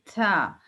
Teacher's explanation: اب دیکھیں تھا کی جو آواز ہے نا وہ اس میں وسپر آ رہا ہے، یعنی تھا، یعنی آپ کو ایسا لگ رہا ہے کہ آپ کے منہ سے تھوڑی سی تھوک نکل رہی ہے تھا. · تو یہ اس وجہ سے ہو رہا ہے کہ یہ نرم آواز والا لیٹر ہے اور تھا کی ادائیگی میں آپ کے جو زبان کی جو ٹپ ہے وہ آپ کے اوپر کے 2 دانتوں سے ثنایا علیا یعنی اوپر کے دانت اس کی اندر والی سائڈ سے آپ کی زبان کی ٹپ ٹچ ہوگی